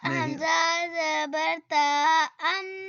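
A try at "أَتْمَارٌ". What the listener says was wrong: ات ات کلکلا نہیں کرنا. ات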